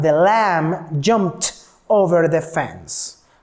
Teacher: the last sound is p no vibration so that's why I pronounce that verb with t